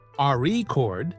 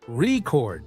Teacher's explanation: if you stress the first syllable, record, it's a noun, but if you stress the second syllable, record, it's a verb